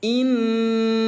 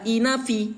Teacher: nun yang bertasydid ini, Ayah Bunda, kita tahan suaranya sampai dengan dua ketu ketukan, maka dia wajib terbaca inna seperti itu. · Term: ghunah